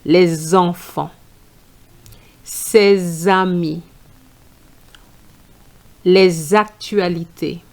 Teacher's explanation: you need to make a liaison between the the S and the E of enfant. And the sound is going to be z